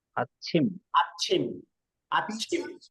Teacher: বাতাসের ঝাপটা বেশি দিতে গিয়ে মনে হচ্ছে যেন ডাবল, কিন্তু ডাবল না, কারণ এটা উচ্চারণ ছি ছি।